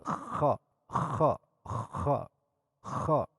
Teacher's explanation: Kha ieu kaluarna masih keneh huruf halak cuman di luhur tenggorokan nu paling luhur